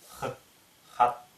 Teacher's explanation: Препятствие образуется глубоко сзади. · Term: Х задняя